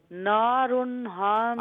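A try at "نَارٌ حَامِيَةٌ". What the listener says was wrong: اچھا نو نہیں ہے نا. ہا نہیں ہے ہا. نارن حامیتن. ہا وسط حلق سے نکالے نا. حامیاتن. اظہار اس لیے ہے کہ ہا ہے نا.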